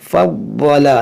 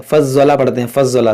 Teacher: ज़ाद को मोटा पढ़ेंगे, ये हुरूफ़ मुश्तालिया है।